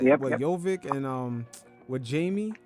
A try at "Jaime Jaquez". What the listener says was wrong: Jaime Jaquez. Yeah, replace the J with an H.